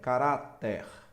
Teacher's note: Então, vejamos aqui, ó, terminado em R, caráter. Ó, olha a sílaba tônica aqui, ó, ra, é a penúltima